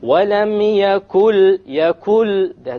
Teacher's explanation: There is no n sound. It is merged. It is dropped in the merging of what is before and what is after. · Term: idgham without ghunnah